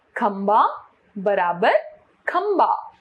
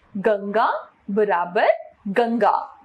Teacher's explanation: अनुस्वार का उच्चारण ना या मां के समान होता है तथा इसका उच्चारण नाक से करते हैं। इसका प्रयोग पंचमाक्षर के स्थान पर किया जाता है।